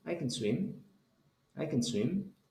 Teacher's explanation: Solo se escucha can, can swim, I can swim, can. No pronuncio ninguna vocal, no digo E, solo digo can, I can swim.